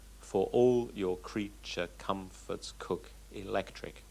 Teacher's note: It has a regular rhythm. It is iambic in rhythm. That is to say, it's alternating unstressed and stressed syllables.